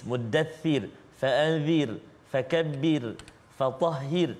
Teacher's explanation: Kenapa? Kerana sebelum huruf ra ada baris kasrah, baris bawah. Jadi tipis. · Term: tarqiq